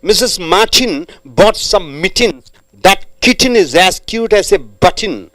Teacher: After T, you get en on and in. Straight away you're jumping from T to N.